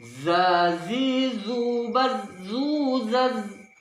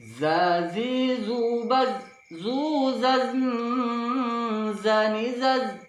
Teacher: huruf zai pengucapannya ditekan, ada tekanan sedikit. Za hampir bertemu dengan gigi bawah, ujung lidah kita.